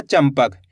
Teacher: तो अपन ने आधा म पढ़ दिया